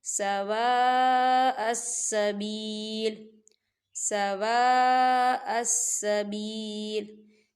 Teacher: 4 حرکت کے برابر اس مد کو کھینچ کے پڑھا جاتا ہے